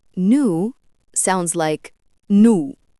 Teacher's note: The final S is usually silent.